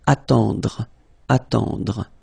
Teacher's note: Then attendre, attendre. Remember, final E, you don't insist on it, it just gives you the possibility to pronounce the dr, dr. Okay, so attendre, attendre.